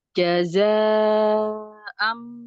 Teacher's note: Mad bertemu dengan hamsah dalam satu kalimat mad wajib muntasil dibaca 4 sampai 5 harakat